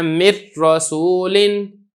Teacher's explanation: جیسے کہ نا من رسولن، اب یہاں پہ آپ نے اس کو را ہی پڑھنا ہے، نون بالکل سرے سے پڑھنا ہی نہیں ہے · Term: ادغام تام